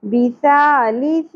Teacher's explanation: دونوں جگہوں پہ سا ہے، سیٹی کی آواز نہیں آنی چاہیے